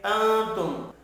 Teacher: نون ساکن کے بعد تا ہے، اخفاء حقیقی ہوگا